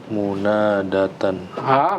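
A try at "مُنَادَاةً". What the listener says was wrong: kurang Munadatan. Nah, ini jangan lupa panjangnya harus munadatan.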